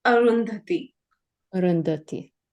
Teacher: both the a Sounds here are the inherent uh sounds